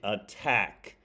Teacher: The T is between two vowel sounds, but it sounds like a T and not a D.